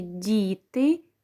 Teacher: у слові діти дь перший звук позначає М'який приголосний